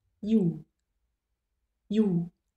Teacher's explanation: It almost feels as if you are yawning behind closed lips. So the tongue starts in E and immediately releases into oo.